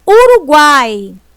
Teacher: Olha, falei o A com mais força, então ele é a vogal. O U é a semivogal e o I também semivogal. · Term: tritongo